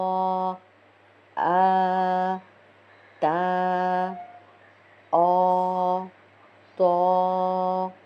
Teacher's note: ہونٹ بالکل بھی گول نہ ہو، ہلکا سا ہونٹوں کا شیپ چینج ہوتا ہے، لیکن منہ کھول کر پڑھنا ہے، تو کر کے بالکل گول کر کے نہیں نکالنا، ٹھیک ہے؟